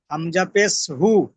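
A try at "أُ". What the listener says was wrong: হু নয়, উ। হর্ষও যেমন উ হয়।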